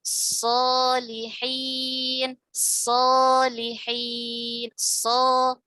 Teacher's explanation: Nah, tingkatan ketebalan pada huruf-huruf isti'la ya, tingkatan ketebalan pada huruf-huruf isti'la itu yang pertama adalah al-maftuh wa ba'dahu alif. Pada saat berharakat fathah dan sesudahnya ada huruf mad alif. Ini tingkatan ketebalan hurufnya menempati tingkatan yang paling tebal ya.